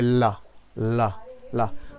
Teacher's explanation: इसमें पार्श्विक व्यंजन क्यों कहते हैं? क्योंकि जब आप ला बोलते हैं तो आपकी जबान बीच में रहती है और आसपास से हवा निकल जाती है। अब ला बोलिए, ला ला ला, तो जब आप ला बोलेंगे तो देखेंगे कि हवा जीभ के पास से, मतलब बगल से निकल जाती है, इसीलिए बोलते हैं इसे पार्श्विक व्यंजन।